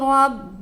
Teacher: با کو 2 بار پڑھیں گے کیونکہ با کے اوپر مشددہ ہے